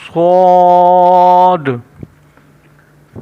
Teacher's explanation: سا، سا، سا کا جیسے ہم پہلے پڑھ چکے ہیں کہ ہم اس کو اس طرح پڑھیں گے کہ اس میں نہ سیٹی کی آواز ہو نہ یہ موٹا ہو، جبکہ سین، سین میں ہم سیٹی کی آواز نکالیں گے اور اس کو باریک پڑھیں گے سین، جبکہ صاد، صاد موٹا حروف ہے اور اس کو ہم گول کر کے پڑھیں گے جس طرح ایک بھاری لفظ پڑھتے ہیں